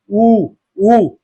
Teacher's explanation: ओष्ठ गोला बन जा रहा है ओष्ठ गोला बन जा रहा है तो उ और उ ओष्ठ से तो ये कुल 25 हो गए।